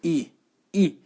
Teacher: ई का उच्चारण करते अग्र स्वर, यानी कि जीभ के अगले भाग से इसका उच्चारण हो रहा है, तो इसलिए ये अग्र स्वर होता है।